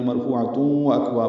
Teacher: یہاں سے شروع کریں گے، واو ہونٹوں کی نا تمام گلائی سے جلدی ادا کریں گے، حمزہ کو اقصی حلق سے ادا کریں گے، کاف سے ملائیں گے، وکواب نہیں پڑھنا، وہ اکواب پڑھنا ہے.